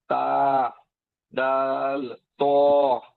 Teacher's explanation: জিহ্বার আগার সামনের উপরের দুই দাঁতের গোড়ার সঙ্গে লাগিয়ে তা দা ত জিহ্বার আগার সামনের নিচের দুই দাঁতের আগার সঙ্গে